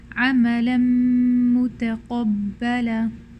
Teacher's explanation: Here we have a tanween, which is nun sakinah followed by a mim, so that the nun sakinah is turning completely into a mim, and that's causing the shadda here. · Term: complete merging